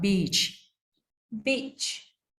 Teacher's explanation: we don't link this e sound with the CH sound after that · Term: long e sound